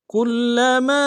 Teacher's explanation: میم کے ساتھ الف مدہ ہے، الف مدہ کے اوپر مد عارض ہے، دائیں الف کی مدار میں کھینچیں گے۔